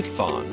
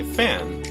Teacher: when you say Fawn your tongue is low and far back in your mouth and when you say fan your tongue moves forward